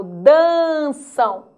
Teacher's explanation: olha lá o m com som do u é um ditongo fonético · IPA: ãu